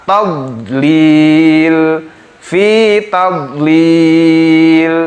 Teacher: pada lafaz tadlil, huruf dod itu tidak dipantulkan karena bukan huruf qalqalah